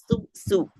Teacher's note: kalau desisnya kecil kita usahakan sekecil mungkin seperti desisnya ular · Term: huruf sin